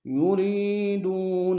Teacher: یوری میں یا مدہ ہے، دو میں واو مدہ ہے، دونوں کو کھینچیں گے